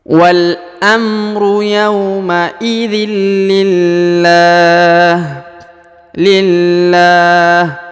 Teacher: harokat tanwin bertemu dengan huruf lam, maka tanwinnya menjadi hilang ya, langsung melebur ke huruf la.